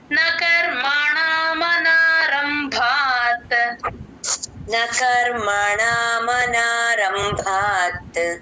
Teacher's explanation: నాలుక మడిచి పైన అంగిటికి టచ్ చేస్తేనే మీకు అణ క్లియర్ గా వస్తుంది · ఎక్కడ ఉందో అక్కడ చూసుకోండి ఒకసారి ఆ ప్లేస్ లో టంగ్ ట్విస్ట్ అవ్వాలి మన రంభాత్ భ కి మహాప్రాణం ఉంది గమనించండి